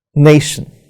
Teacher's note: But before that, if I use a word, nation, so nay is stressed, it has two syllables, nay and shin. So nation, in this example, nay is stressed and shin is not stressed.